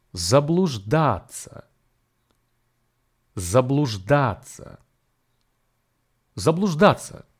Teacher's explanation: the stress here falls on the third syllable